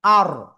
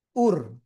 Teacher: র অক্ষর সাকিন, তার ডাইনে জবর অথবা পেশ আসলে মোটা আওয়াজে পড়তে হবে, জবর আসলে আর, ঠিক আছে।